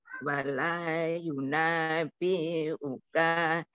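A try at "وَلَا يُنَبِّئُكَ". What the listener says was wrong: yunap biuka, baknya dobel, walayunap biuka,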